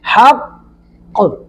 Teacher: یہ تھوڑا سا وقت دے کر ہم نے قاف پر قلقلہ کیا ہے،